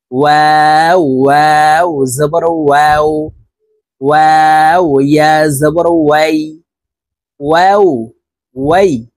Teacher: ওয়াও হরফ ঠোঁট গোল করে দুই ঠোঁটের মাঝে ফাঁকা রেখে উচ্চারণ করতে হবে